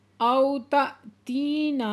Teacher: او تأتینا او پہ واولین ہے نرمی سے پڑھیں گے، اور تا پہ حمزہ ساکن ہے جھٹکا لگا کے پڑھیں گے ، تی پہ یا مدہ ہے دو حرکت کھینچ کے پڑھیں